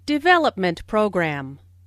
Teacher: Since these 2 words make a compound noun, the main stress falls on development.